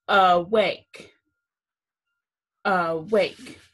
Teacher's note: makes the vowel long so the second syllable is accented